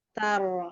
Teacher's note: ketika bacaan tar itu ro-nya tebal karena sebelumnya fathah, tetapi tidak merubah taknya menjadi tebal. Jadi tidak dengan menyukan taru gitu, tidak.